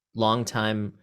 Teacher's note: long time is one of those words that it feels like both are stressed but the secondary stress is almost as strong as as the first